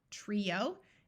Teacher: here some words with an i o and the I has a clear long e sound